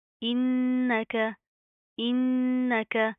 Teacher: نون کے اوپر شد آ رہی ہے, غنہ کریں گے, نا کے اندر ساؤنڈ پیدا کریں گے